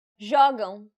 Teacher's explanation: Since this word ends with an M, the stress should be on the second to last syllable, which in this case happens to be the first syllable